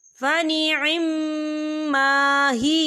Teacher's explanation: یہاں میم مشدد ہے تو یہاں پر غنہ بھی ہوگا، یہاں پر الف مدہ بھی ہو رہا ہے، تو ہم اسے 2 یا 3 رکعت کی برابر کھینچے پڑھیں گے۔